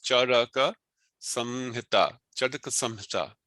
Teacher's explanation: I don't say Charak Samhita. It is not Charak Samhita, it is Charaka Samhita. But the ka is short. So these are three short syllables, Charaka Samhita, Charaka Samhita.